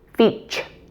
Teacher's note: The T in the middle of the word is pronounced as a CH sound. Feach. This is the same in words like future, nature, or culture.